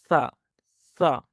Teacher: کچھ سیکنڈز کے لیے اپنی زبان کی نوک کو سامنے کے دانتوں کے ساتھ لگا کر رکھیں، اور اب اس آواز کو ادا کریں، ثا ثا۔ بالکل زبان بہت زیادہ باہر نہیں نکلے گی اور نہ ہی اندر کی جانب، بلکہ سامنے دانتوں کے سروں کے ساتھ لگاتے ہوئے اس آواز کو نرمی کے ساتھ ادا کرتے ہیں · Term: حرف ثا